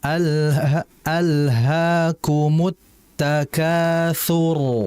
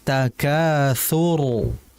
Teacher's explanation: Jadi fokus pada pangkalnya. Lidahnya sudah pas, getarannya sudah pas tinggal pada pangkalnya agar rnya itu menjadi tebal.